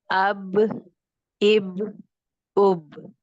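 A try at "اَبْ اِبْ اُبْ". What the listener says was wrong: अब दबा के नहीं, बहुत ज्यादा दबा के नहीं, नरमी के साथ।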